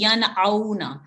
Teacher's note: نون کو اظہار سے یعنی کلیئرلی اور کھول کے پڑھیں گے، ینعونا، ین نہیں کرنا، اس کو کھینچنا نہیں ہے اور ناک سے آواز نہیں جاری کرنی، کلیئرلی ینعونا، میں نے عین کی آواز نکال دی تھی، ینعونا ہے۔